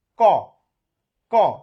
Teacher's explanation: দেখেন খুব অল্প পরিমাণ বাতাস বের হচ্ছে, সেই কারণে অল্প প্রাণধ্বনি